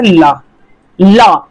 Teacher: आगे की जीभ लॉक हो जा रही है। साइड साइड से हवा निकल रही है। · इसमें हवा जीभ के बगल से निकलती है। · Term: पार्श्विक व्यंजन